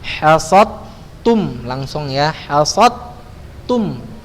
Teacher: Jadi lidahnya udah kena huruf dal, baru dimajukan ke huruf ta, hasabtum ya, baru kemudian antum ucapkan huruf ta-nya.